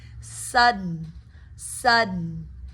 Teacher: You're catching the D in the roof of your mouth. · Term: stop D